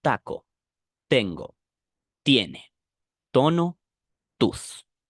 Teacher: consonant T is less explosive in Spanish and is more implosive. This is not taco, but taco instead.